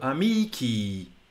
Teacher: But our brains are confused by this because the long vowel on the end, our brains interpret it as a stressed quantity when it's not